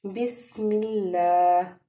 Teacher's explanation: آگے جو میم ہے، میم کو دیکھتے ہیں جب لام سے ملایا لفظ اللہ کے، تو کیونکہ میم کے نیچے زیر ہے اس لیے ہم لفظ اللہ کو نرمی سے ادا کریں گے۔ یہاں پہ لام کے اوپر کھڑا زبر ہے، لام کو ہم نے ایک الف کے برابر کھینچ کے پڑھنا ہے۔ · را کو ہم نے کیونکہ زبر ہے اس کے اوپر اس لیے پر پڑھنا ہے